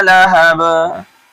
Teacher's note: زبر کے اوپر جب ہم وقف کرتے ہیں تو وہاں زبر کو کیا کرتے ہیں؟ ساکن کر دیتے ہیں، جزم بنا دیتے ہیں، اس لیے یہاں بھی با میں قلقلہ ہوگا